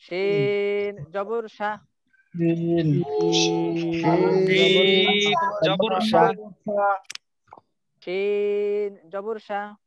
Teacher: শিন মুখের ভিতরটা কিন্তু, মুখের ভিতরটা কিন্তু ভরে যায় মনে হবে, মনে হবে যে মুখের ভিতরটা ভরে গেছে, তাই না? জিহ্বার মধ্যখানটা উপরের দিকে উঠে শিনের ক্ষেত্রে, অর্থাৎ বাতাসটা ভিতরে থাকবে। শিন, বাতাসটা ভিতর থেকে আসবে, পুরো মুখ ভর্তি ভিতরে হয়ে আসবে থাকবে।